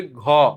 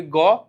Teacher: যদি বলি ঘ, দেখো একটা আওয়াজ বাড়ি খাচ্ছে। যদি বলি গ, কিছু বাড়ি খাচ্ছে না। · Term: অল্প প্রাণ মহাপ্রাণ